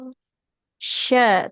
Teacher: Sya, tengah lidah menempel ke langit-langit atas.